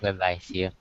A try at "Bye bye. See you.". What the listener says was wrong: Remember, you're at the theater, so you're seeing each other, right? sounded like it sounded like you were ending a phone call. But you're standing face to face.